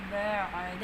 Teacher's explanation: آئین کو گلے کے درمیان سے ادا کرنا ہے. آئین وسط الحلق سے ادا ہوتا ہے, بعد ایسے.